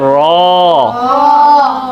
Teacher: रॉ को पढ़ते वक्त ज़बान की नोक तालू की तरफ उठती है, रॉ। रॉ, इसको मोटा पढ़ना है, रॉ।